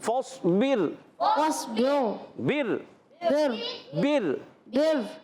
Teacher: فاصبر، فاصبر فاصبر، فاصبر صوت کو موٹا رکھنا ہے، فاصبر، فاصبر اور بر راہ کو باریک کریں گے